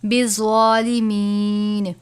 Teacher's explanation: زوا کو پر پڑھنا ہے، زا نہیں پڑھنا بلکہ زوا پڑھنا ہے